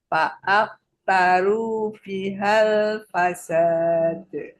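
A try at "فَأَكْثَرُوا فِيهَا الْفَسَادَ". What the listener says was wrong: P-nya panjang.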